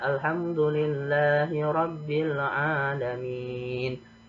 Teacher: ini huruf na sebenarnya huruf hidup, tapi karena diwakafkan, maka harus dimatikan. Jadi tidak boleh dibaca alamina. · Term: mematikan huruf yang akhir